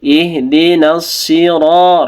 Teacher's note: sodnya kasrah tapi tetap tebal juga. Ihdinas siratal, ro-nya tebal ya, ro-nya 2 harokat.